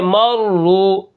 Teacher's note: را کے اوپر پیش ہے، یہاں پر ہم کیا کریں گے، اس کو موٹا پڑھیں گے